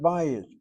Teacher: We emphasize that first syllable, short vowel, open syllable, is irregular, demands the accent.